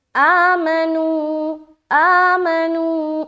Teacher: حمزہ کے اوپر کھڑا زبر ہے، ایک الف کھینچیں گے، میم کے اوپر زبر ہے، بالکل بھی نہیں کھینچنا